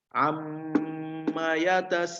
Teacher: cara membacanya panjang ya, panjang dengungnya adalah satu alif. Ya. Satu alif itu 2 harokat. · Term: gunnah musyaddadah